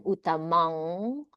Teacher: I wouldn't go all the way to closing my lips. You go like towards the m sound but you don't actually m at the end. Um and then doing a nasalization with a vowel.